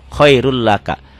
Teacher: Ditulisnya khairun laka, dibacanya khairul laka, n-nya hilang. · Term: idgham bila guna